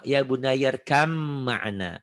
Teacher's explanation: Ba-nya berubah menjadi mim